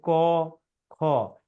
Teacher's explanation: এই যে ক খ পড়ছেন, দেখেন কণ্ঠ থেকে আওয়াজ আসছে, এই জন্য এটা কণ্ঠধ্বনি